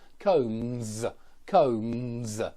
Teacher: even though we write it with an S, we pronounce it with a Z